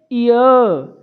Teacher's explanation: normally नहीं शुद्ध रूप से बोलेंगे य तो जरा ध्यान दीजिएगा जब आप य बोल रहे हैं तो आपको झटके से आगे इ की ध्वनि आ रही है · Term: अर्ध स्वर